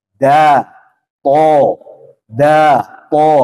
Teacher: sedangkan dal dan tho ini tidak mengeluarkan udara maka harus dibulatkan